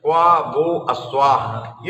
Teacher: तो क्वा में जो आ है वो एक मात्रिक स्वरित है, ह्रस्व स्वरित है, उसके अंदर उदात्तत्व भी है और अनुदात्तत्व भी है।